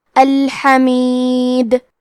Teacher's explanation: کلمت الحمید میں آخر میں حرف دال پہ رکے تو اس پہ جزم سے رکیں گے، تو یہاں دال کا حکم ہے قلقلہ تو ہم حرف دال کو ہلاتے ہوئے یہ کلمہ کو پڑھیں گے